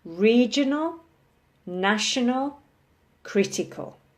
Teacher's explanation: regional, national, critical. Stressing the first syllable.